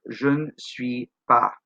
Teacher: We drop the sound of the e altogether. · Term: e muet